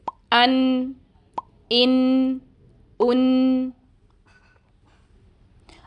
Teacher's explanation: اس سے پہلے آپ نے لام کے لیے 8 دانتوں کے مسوڑے استعمال کیے تھے، مگر اب صرف 2 دانتوں کے مسوڑوں پر زبان کی نوک رکھی جائے گی، یعنی آپ نے زبان کو اندر زیادہ پھیلانا نہیں ہے، اور نون کی آدھی آواز ہمیں اس جز لسانی سے سنائی دے جائے گی اور باقی آدھی آواز ہمیں دوسرے جز خیشومی سے سنائی دیتی ہے · نون زبان کی نوک اور اس کے مقابل سامنے کے اوپر والے 2 دانتوں کے مسوڑوں سے ادا ہوتا ہے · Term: غنہ